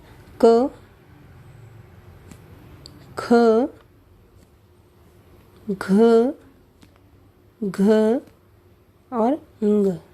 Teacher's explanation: अब देखिए, ये जो 5 वर्ण हैं, इन 5 वर्ण को हम कोमल तालव्य में लेते हैं क्योंकि संस्कृत में ये ध्वनियाँ कंठ थी। अब कंठ से कुछ ऊपर कोमल तालु के स्थान से बोली जाती हैं, इसीलिए हम इन्हें कोमल तालव्य ध्वनियाँ कहते हैं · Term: कोमल तालव्य व्यंजन